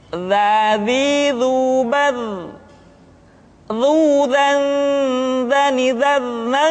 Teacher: huruf dza diucapkan dengan menyentuhkan ujung lidah dengan dinding dua gigi seri bagian atas seperti kita mengucapkan huruf tsa ujung lidah boleh ditampakkan ataupun tidak